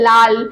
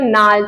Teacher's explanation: এই উপভাষার মধ্যে যেগুলো ও আছে, ও ধ্বনি রয়েছে, স্বরধ্বনি, ও ধ্বনিটা হস্যু ধ্বনিতে রূপান্তরিত হয়ে যাচ্ছে এবং ল ধ্বনিটা কিন্তু নয়ে পরিণত হয়ে যাচ্ছে। যেরকম আমরা বলি না লাল, তো লাল থেকে হয়ে গেল নাল, তো লটা ন হয়ে যাচ্ছে কিন্তু, মনে রাখবে। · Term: কামরূপ উপভাষা